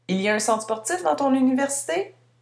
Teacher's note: dans une situation plutôt informelle, on garde la phrase affirmative, mais on utilise une intonation montante